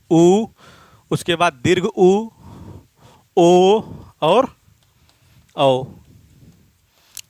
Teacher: जो ओष्ठ की आकृति है वो क्या हो जाएगी? गोल हो जाएगी। · वृत्ताकार स्वर में ओठों की आकृति गोल हो जाती है